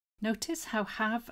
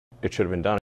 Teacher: Notice how have and been almost disappear. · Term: fast connected speech